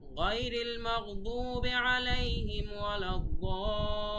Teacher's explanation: দতে 4 আলিফ, লিতে 3 আলিফ